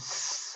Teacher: 바람이 스 하고 통과되면서 나는 마찰음